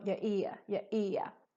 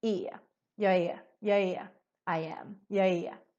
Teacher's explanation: the är, which means I am, turns to an e sound instead